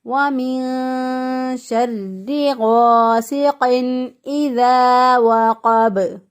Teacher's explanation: اب یہ ساکن حالت میں ان حروف پر قلقلہ ہوتا ہے، اب جب ہم وقف کریں گے تو اس وقت با پر قلقلہ ہوگا، با ساکن ہو جائے گا